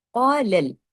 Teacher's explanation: قاف کو ہیوی کرنا ہے لیکن قاف کے ساتھ جو الف ہے یہ بھی یہاں ہیوی ہو جائے گا